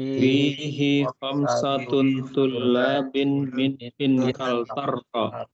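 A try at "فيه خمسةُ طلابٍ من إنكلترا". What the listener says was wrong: Perhatikan di sini fihi khamsatu, tidak boleh ditanwin ya. Fihi khamsatu tullabin min Inkaltarra.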